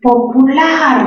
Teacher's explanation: mayor fuerza de voz en la última sílaba, y por lo tanto es una palabra aguda, aguda terminada en R.